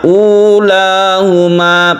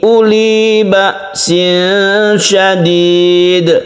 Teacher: membacanya ulahuma panjang satu alif. Kalau yang ini uli ba'sin syadid, uli ini dipendekkan.